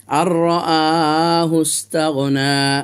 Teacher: নুন সাকিনের উচ্চারণটা রর মধ্যে ঢুকে গেল। হামজা খাড়া যাবার আ, এই যে খাড়া আলিফ, খাড়া যাবার আছে এই জন্য। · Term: ইদগামে নাকিস